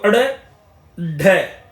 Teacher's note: उत्क्षिप्त जिनके उच्चारण में जीभ ऊपर उठकर झटके के साथ नीचे को आए ड़ और ढ यहां पर देखेंगे जब आपकी जीभ एकदम से ऊपर उठती है